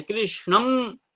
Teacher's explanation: मुंह बंद हो जाता है। नाक से निकलता है और सिर में टकराता है। इसलिए सिरनास का स्थान विचार किया गया है। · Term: अनुस्वार